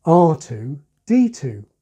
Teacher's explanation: In this case, there's also a contrast between the two letters. So as well as the deaccenting of the repeated number 2, we also have the accenting of the contrasted letters